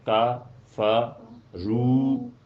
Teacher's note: آدھی آدھی آوازیں اور رو پوری آواز ہے